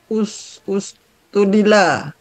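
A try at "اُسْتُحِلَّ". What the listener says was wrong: Ustuhilla pakai syiddah. Ingat 5 domir pakai syiddah.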